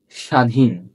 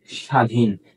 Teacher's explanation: এখানে যে ব ফলা আছে সেই ব ফলা উচ্চারিত হচ্ছে না